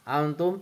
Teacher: ikfa hakiki karena ada nun mati atau tanwin bertemu dengan huruf ta, cara baca samar-samar membentuk huruf ta.